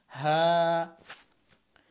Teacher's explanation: তারপর হচ্ছে হা, হা হচ্ছে হলকের শেষ, কিন্তু এর উচ্চারণটা কেমন যেন ভিতর থেকে আসবে। হা, হাকে অনেক শক্ত করা যাবে না।